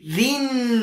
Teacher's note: را کے نیچے جب زیر ہو تو باریک پڑھا جائے گا